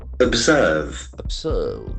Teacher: The accent falls on the second syllable and the letter S sound.